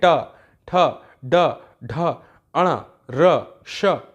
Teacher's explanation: जो जीभ आपकी ट बोलते समय जहां टकरा रही है ना, उसे कहते हैं मूर्धा। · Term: मूर्धन्य